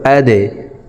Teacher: হামজা হা জবর আহ আহ হামজা খ জবর আ হামজা দাল জবর আদে দাল কলকলার হরফ তাই নিচের দিকে ধাবিত করে ধাক্কা দিয়ে উচ্চারণ করব।